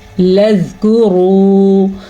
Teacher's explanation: اگر ہم اس کو پڑھیں گے لذکروا تو وہ زا ہو جائے گا، اسے ہم نے پڑھنا ہے لذکروا۔ را کو پور پڑھیں گے، را پہ پیش کی وجہ سے